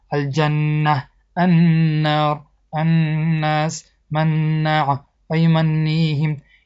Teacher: با آواز دماغ با مقدار 2 حرکت کشیده خواندن واجب است. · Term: نون تشدید دار